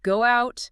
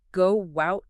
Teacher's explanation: You might hear a little bridge sound inserted to make it flow better, like go out. It often sounds like go wout, almost like a W sound between the words. Intrusion, that's when an extra sound pops up between words. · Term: linking